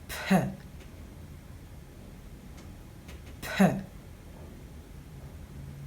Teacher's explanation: This is a Fortis bilabial plosive sound